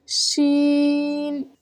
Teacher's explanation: जुबान के दरमियान को तालों की तरफ बुलंद करते हुए बारीक और फैलती हुई आवाज में पढ़ें